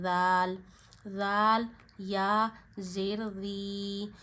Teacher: زبان کا سرا اوپر کے دانتوں کے اندرونی کناروں پہ لگا کے ذال نرمی سے پڑھنا ہے